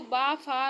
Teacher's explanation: निचले ओठों और ऊपर के दांतों से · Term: दं तोष